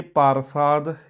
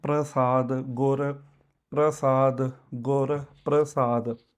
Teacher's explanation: ਇਹਦੇ ਵਿੱਚ ਰ ਦੀ ਆਵਾਜ਼ ਪਹਿਲਾਂ ਆਉਣੀ ਆ ਅ ਦੀ ਬਾਅਦ ਵਿੱਚ ਪ੍ਰਸਾਦ ਇਹਦੇ ਵਿੱਚ ਪ ਅ ਰ ਠੀਕ ਹ ਇਹ ਸਮਝ ਲੈਣਾ